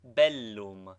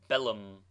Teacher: doubled consonants should both be sounded contrary to the custom of English